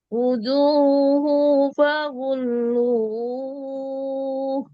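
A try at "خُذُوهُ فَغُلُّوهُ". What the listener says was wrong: Ya, hu-nya jangan dipanjangkan. Khudhuhu fagulluh.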